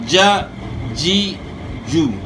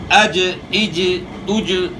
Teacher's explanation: زبان کا بیچ اوپر کے تالو کے ساتھ چپک رہا ہے، اوپر لگ رہا ہے، ج، جی، جو۔ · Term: جیم